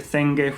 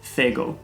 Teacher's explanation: the ng sound, the pre-nasalized g, is replaced as part of the ending